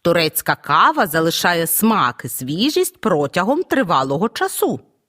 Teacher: це однорідні означення з'єднані сполучником смислові відношення розділові звернімо увагу що однорідні члени речення вимовляємо з перелічувальною інтонацією на кожний з них падає логічний наголос